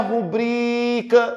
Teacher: Olha a rubrica, demora mais tempo onde? No BRI. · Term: paroxítona